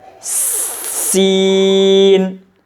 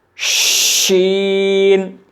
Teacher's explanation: سین کی اور شین کا مخرج الگ الگ ہے، یعنی سین تو ہلکی سی سیٹی کی آواز نکلے گا اور شین بڑی سختی کے ساتھ نکلے گا